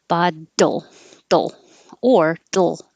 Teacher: easier to make a very quick little dull instead of dole don't leave too much time between the d and the l